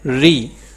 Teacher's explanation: جیسے را مفتوح ہو تو پر اور مکسور ہو تو باریک پڑھی جاتی ہے، یعنی را کے نیچے زیر ہو تو وہ ہم باریک پڑھتے ہیں